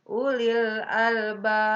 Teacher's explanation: ini ada ba mati di akhir kalimat ya karena diwakofkan. Maka itu masuknya hukum qalqalah, dipantulkan membacanya. Karena ini matinya diwakofkan di akhir kalimat, maka itu masuk qalqalah kubro, dimantulkannya agak besar.